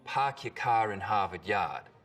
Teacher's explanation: for that bowel sound in park your car in harvard yard we call this the start vowel in boston it's usually pretty fronted